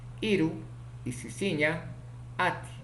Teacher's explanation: Vocal I, vocal alta, no redondeada, ocurre en posición inicial, medial y final.